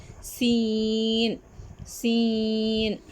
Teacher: سین کی آواز سیٹی کی طرح نکلتی ہے